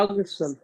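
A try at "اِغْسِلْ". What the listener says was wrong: नहीं, ज़ेर से शुरू करें, आप ज़बर से शुरू कर रहे हैं। एग एगसिल एगसिल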